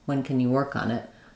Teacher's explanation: work is long and the rest are fast